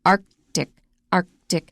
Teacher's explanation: you're going to have to pause a long time after that k